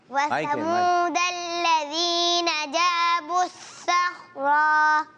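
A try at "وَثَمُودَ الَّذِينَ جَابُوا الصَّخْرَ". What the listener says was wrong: یہ آپ رک کیوں گئے آگے, اور یہاں تو صخرہ بھی نہیں ہے, الف مدہ تو نہیں ہے نا.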